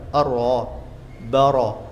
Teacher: Idza kanat maftuhah, ra kalau fathah dibaca tebal